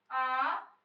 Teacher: ओष्ठ का आकार गोल ना होकर फैल जाता है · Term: अवृताकार वर्ण